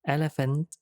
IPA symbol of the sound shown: e